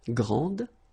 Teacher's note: And regarding the feminine form, you will pronounce it grande. Okay, don't insist on the final E, but then pronounce this D, grande, and then exactly the same pronunciation, grande.